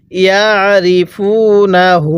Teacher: এই হা এর মধ্যে আমরা এক আলিফ টান দিব কারণ হায়ে জমিরের উপরে এরকম উল্টা পেশ থাকলে সেই হা জমিরের মধ্যে এক আলিফ টেনে পড়তে হবে এরপরে কামা ইয়া আরিফুনা কামা ইয়া আরিফুনা আমি কিন্তু মিমের মধ্যে আর এখানে ওয়াও এর মধ্যে টান দিছি।